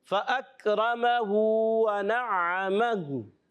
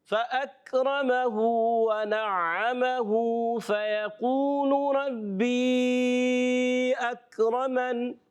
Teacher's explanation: اگر ملا کر پڑھیں گے تو اس ہا کی الٹی پیش کو بھی کھینچ کر ادا کریں گے، یہ یاد رکھنا ہے.